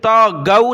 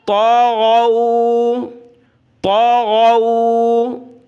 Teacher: غین کو اس کے مخرج سے نکالنا ہے، غین کر کے، اس کی جگہ ہم نے گاف نہیں پڑھنا، یعنی تا گو نہیں پڑھنا، اور یہ بڑی تا ہے، اس کو موٹا کر کے پڑھیں گے۔